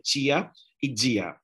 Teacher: La mayor parte de Brasil pronuncia este sonido más africado de la T y de la D cuando se une a la vocal I o al sonido de la vocal I, ¿no?